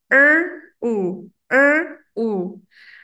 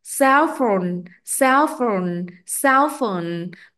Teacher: mình bắt đầu với khẩu hình miệng vuông tròn sau đó chuyển sang khẩu hình tròn với việc chu môi về phía trước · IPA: /əʊ/